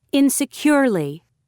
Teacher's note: stress on third syllable